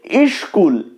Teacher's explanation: করতে একটু কষ্ট হচ্ছে এ কারণে এই কষ্টটা দূর করার জন্য স্কুলের আগে একটা ই যোগ করা হলো একটা স্বরধ্বনির আগমন ঘটলো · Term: আদি স্বরাগম